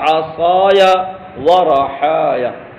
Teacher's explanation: یا کو ساکن نہیں پڑھیں گے بلکہ فتحہ دے کر پڑھیں گے تاکہ اجتماع ساکنین سے بچا جا سکے